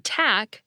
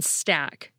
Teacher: We get aspirated /t/ in “tack,” but unaspirated /t/ in “stack.”